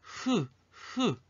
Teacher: 히읗은 소리가 뭐 걸리는 거 없이 그냥 목구멍에서 자연스럽게 흘러나오죠. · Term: 목구멍 소리